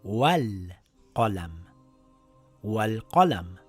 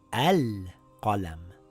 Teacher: When we are reading these two words together, we have to drop the Hamzatul Wasl. It now reads Wal Qalam.